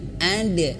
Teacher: huruf dal yang bersukun, pantulkan ada, dan pantulannya itu harus jelas dan pantulannya harus ke ada.